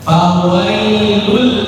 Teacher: maka diidamkan dimasukkan dilebur jadihilang kihatan langsung ke huruf lam berikutnya fawailul terus tanpa mendengung idgham bila ghunna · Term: Idgham bila gunna